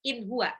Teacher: nun sukun ketemu ha, nggak boleh didengung atau ditahan karena dia izhar